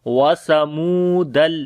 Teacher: سا کو نرم پڑھیں گے، میم کو لمبا کریں گے، واو مدہ ہے